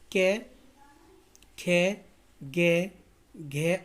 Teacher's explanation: है ये हमारे पांच वर्ण आते हैं क वर्ग के अंतर्गत तो दोस्तों सभी का इनका जो उच्चारण स्थान होता है वो दोस्तों कंठ होता है